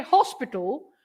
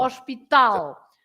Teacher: You say hospital, so you write exactly the same, hospital, but you pronounce, you stress hos, and we stress tal